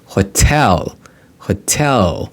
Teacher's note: the second syllable takes the stress